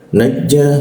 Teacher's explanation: Wa'idh huruf dha digit, dha, lalu masuk ke huruf ja. Najja huruf ja di tengah-tengah lidah ya. Najja rongga udaranya agak sedikit tertutup sehingga ada hembusan nya agak terhendap ya.